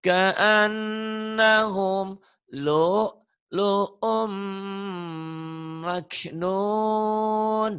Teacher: Umnya jadi gunnah masuk.